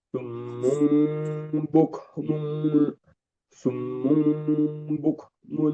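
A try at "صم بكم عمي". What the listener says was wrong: Ditahan sedikit lagi. Satu setengah alif atau alias 3 harokat. Summum bukmun.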